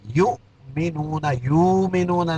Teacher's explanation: فی ہدی للمتقین الذین یؤمنون، یؤمنون یہاں جھٹکا دینا ہے، یؤمنون، یؤمنون نہیں، یہاں حمزہ پڑھیں گے، واو نہیں پڑھیں گے